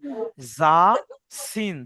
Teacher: জিহ্বার আগা সামনের নিচের দাঁতের সঙ্গে লাগিয়ে যা এবং সিন উচ্চারিত হয়।